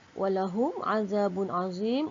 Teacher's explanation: Walahum dibaca dengan terang kerana hukum mim mati bertemu ain dibaca dengan izhar syafawi. Kemudian za dibaca dua harakat, menunjukkan hukum mad asli sebelum alif ada baris atas.